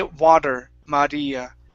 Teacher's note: it's like an r your tongue hits the top of your mouth